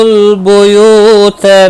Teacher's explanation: یو واو مدہ ہے، ایک الف کے برابر کھینچ کر پڑھیں گے